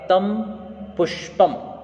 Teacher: तो तम ये भी दीर्घ होगा, पु ह्रस्वकार है, लेकिन क्योंकि वहाँ पर आगे की तरफ में हम आधा श देख रहे हैं, इस कारण से यह भी दीर्घ हो जाएगा। और पम, प के ऊपर अनुस्वार होने के कारण से इसे भी दीर्घत्व प्राप्त होगा।